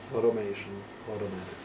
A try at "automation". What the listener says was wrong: Okay, so remember AU are often like an O, so it's automatic and automation. It's not AU, never, ever.